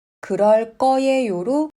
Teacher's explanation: The 'ㅎ' of '그렇다' disappears. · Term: ㅎ irregularity